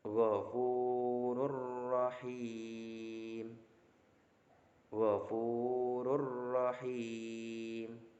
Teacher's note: memasukkan huruf pertama yaitu nun sukun ataupun tanwinnya ke huruf setelahnya yaitu lam ataupun ro tanpa disertai dengung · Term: idgham bila gunnah